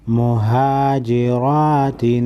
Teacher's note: रा पर कड़ी ज़बर है, 1 अलिफ के मकदार खींचेंगे और रा फर ज़बर है, ज़बर की वजह से रा को मोटा पढ़ेंगे